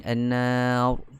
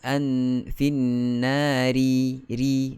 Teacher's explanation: Kalau kita berhenti kita akan baca dengan an-nar, tebal. Kalau kita sambung an-finnari, ri, nipis.